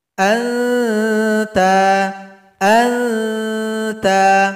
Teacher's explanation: Huruf ta, ujung lidah, kita dekatkan ke gusi gigi seri bagian atas di belakangnya. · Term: ikhfa hakiki